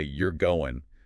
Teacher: Like if you say, "you're going," with a rising intonation, it sounds like a question. But if you say it with a falling intonation, it sounds more like a statement.